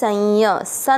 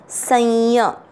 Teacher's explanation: और एस के ऊपर बिंदी शब्द के बीच में है तो इसको नाक से आधा एन पड़ेंगे मिक्स करेंगे